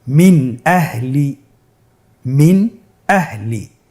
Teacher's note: আমরা জানি হামজা ইজহারের হরফ। তাহলে আমরা এখানে নুন সাকিনকে স্পষ্ট করে পড়ব, গুন্না ছাড়া পড়ব।